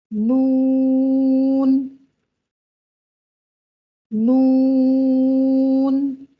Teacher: نون کو ادا کرتے وقت زبان کا اکثر و بیشتر حصہ تالو کی طرف نہیں اٹھتا، بلکہ نیچے رہتا ہے، اور نون کو ادا کرتے وقت زبان کا بیشتر حصہ تالو سے علیحدہ رہتا ہے